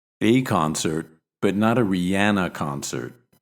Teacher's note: Here we stress the indefinite article, but not the noun, because we mean I was at a concert in general, but not the one that you're talking about.